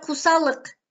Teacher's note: Тилге карай жоон, эринге карай а, ы эринсиз, у эринчил. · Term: толук эмес сингармонизм